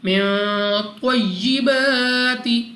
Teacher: الف سے پہلے زبر الف مدہ 2 سیکنڈ تک لمبا کرنا ہے، را پر زبر را کو پر یعنی موٹا پڑھیں گے۔